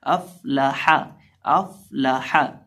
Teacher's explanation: निचले होंठ का वस्त जब सामने वाले ऊपर के 2 दांतों के किनारे से लगता है तो फ़ा अदा होता है।